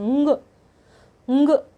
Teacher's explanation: हवा या हवा का प्रमुख अंश नाक से ही निकलता है, नाक में बोले जाते हैं। उंग उंग यूँ बोला जाता है, इनको नाक से बोला जाता है, इसलिए इनको नासिके ध्वनियाँ कहते हैं।